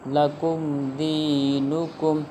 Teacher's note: یہاں پر اب غنہ نہیں ہوگا کیونکہ میم ساکن کے بعد حرف با اور میم کے علاوہ کوئی حرف یعنی دال ہے